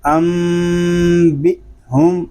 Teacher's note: حمزہ ساکنہ کو جھٹکا دے کر پڑھیں گے اس میں جو قاعدے ہیں وہ ہے نون ساکن میں اقلاب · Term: حمزہ ساکنہ میں جھٹکا